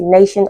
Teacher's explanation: the letter T the letter T is articulated as sh also